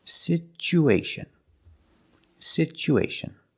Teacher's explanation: because there's no stress on the U we change the T to the CH sound